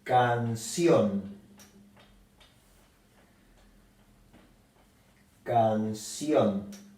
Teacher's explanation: La sílaba acentuada es la última y la palabra termina en N. Entonces lleva la marca, la tilde. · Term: palabras agudas